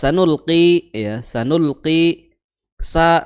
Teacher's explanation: sa makhrajnya adalah di ujung lidah bertemu dengan gigi seri bawah